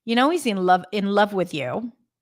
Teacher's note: I stress the word love and also know a little bit